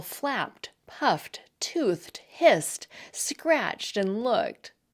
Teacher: It's pronounced as a T when the base word ends in a voiceless consonant.